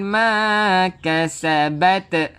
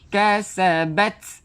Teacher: Keluarkan angin untuk tak. Bukan kita lantunkan.